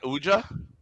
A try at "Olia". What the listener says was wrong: Not Uja. It's Olia. Hey, that's as a silent J, just like ICP.